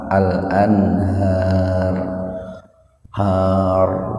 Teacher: Ro-nya itu dibaca tafkhim, dibaca tebal, karena sebelum ro-nya huruf harokat fathah.